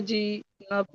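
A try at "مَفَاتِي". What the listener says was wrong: মাফাজি। মুখে বলছেন তাইয়াজের তি, আর উচ্চারণ করছেন জিমিয়াজের জি।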